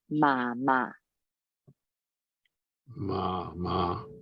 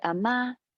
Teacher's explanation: remembering that the grandmother is low and the mom is high